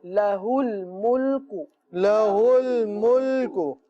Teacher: ہا کی ادائیگی کا خاص خیال رکھیں، حمزہ ادا نہ ہو